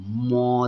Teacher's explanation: উচ্চারণের সময় নাকের এই বাঁশিতে বাতাস আবদ্ধ হয়ে গুন গুন বা গো গো শব্দ হয় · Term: নাসিক্য বর্ণ